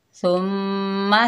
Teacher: सा के ऊपर पेश, आगे मीम साकिन, मीम मुशद्दद है, गुन्ना होगा सुम, मीम के ऊपर ज़बर बगैर खींचे पढ़ेंगे मा, सुम्मा। सा में सीटी नहीं आनी चाहिए, सा को बहुत ही नरमी से अदा करेंगे